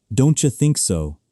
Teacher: It's almost like a cha sound gets added.